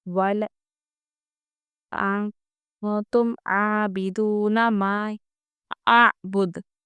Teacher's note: نون ساکن کے بعد حرف اخفا میں سے تا ہے، اس لیے ہم یہاں پر اخفا کریں گے